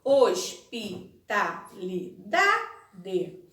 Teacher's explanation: em hospitalidade a sílaba tônica é a penúltima sílaba